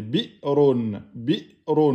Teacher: quand vous avez une hamza sukun, il faut bloquer les cordes vocales.